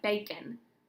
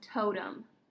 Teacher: bacon has that schwa sound on the end, or totem. The O makes long O, but the E at the end, totem, is schwa.